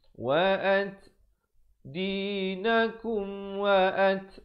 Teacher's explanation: Ada hamas bunyi anginnya.